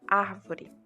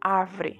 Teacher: a palavra árvore na português padrão que era uma palavra proparoxítona se converteu no português não padrão em uma palavra paroxítona